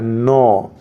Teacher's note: न का उच्चारण स्थान क्या है? न, तो न का उच्चारण स्थान भी नासिक है